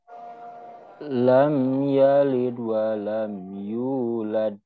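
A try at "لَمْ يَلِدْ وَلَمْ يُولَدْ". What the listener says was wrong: Suguronya kurang, Pak. Suguronya kurang de. Yalid wa, yalid wa. Yang ujungnya masih lad. Coba bedakan dulu ya. Nah, coba bedakan dulu. Yang ditahan itu seperti ini. Lam yalid wa lam yulad. Nah, itu ada tekanan sedikit ya. Nah, kalau ini langsung mantul. Lam yalid wa lam yulad. Lam yalid wa lam.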